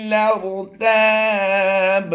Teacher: اس لام کو ہم نے ڈائریکٹ را کے ساتھ ملانا ہے، الف خاموش ہو جائے گا ، سائلنٹ